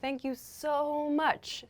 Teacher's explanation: one thing we do when we use so is we often make the o sound really long